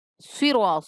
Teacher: صاد ہے پر پڑھیں گے، سرا، را کو بھی پر پڑھیں گے